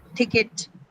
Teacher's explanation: That syllable itself is not stressed. So the only the first sound in ticket is uh aspirated.